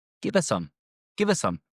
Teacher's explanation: Again, we drop the H and the her.